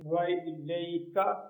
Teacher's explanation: اس کاف کو باریک پڑھنا ہے، یہاں اس کی کا خیال رکھنا ہے.